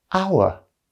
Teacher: the h is silent so we pronounce it our which starts with a vowel sound